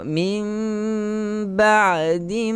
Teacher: tukarkan bunyi nun mati kepada huruf mim. Sebab itu kita kena rapatkan mulut, sentuh antara kedua bibir tanpa menekan antara salah satu antara satu sama lain.